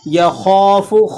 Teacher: خا یہ موٹے حروفوں میں سے ہے تو آپ نے اس کو بھی ایک الف تک کھینچنا ہے اور موٹا کر کے ادا کرنا ہے